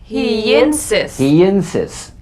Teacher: the lawyer yesterday you spoke to the lawyer the y link linking words that end in the y buzz